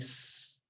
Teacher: all the sound is coming from their mouth. None of it is coming from the throat. Then we tell them that that is the voiceless or unvoiced sound.